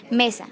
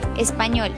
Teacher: Las palabras que tienen tilde llevan el acento en la sílaba que tiene la tilde. Ejemplo, mesa tiene el acento en la sílaba me. Español tiene el acento en la sílaba ñol.